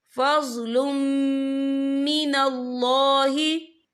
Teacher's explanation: तनवीन के बाद जो है मीम आ रहा है, और मीम जो है रुफ़ यरमलून में से है, तो यहाँ पर इदगाम होगा, तो हम इसे गुन्ने के साथ पढ़ेंगे